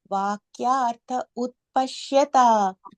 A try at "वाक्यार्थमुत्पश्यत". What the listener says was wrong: If you're saying Utpashyata, it has to be Vakyartham, im sound, okay? I mean, that's why I broke that as im, because that way you don't say vakyartham utpashyata. So if you are not able to say it together, then you just say vakyartham utpashyata.